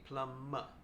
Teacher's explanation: the b is silent so it's actually plum and we focus on the m sound at the end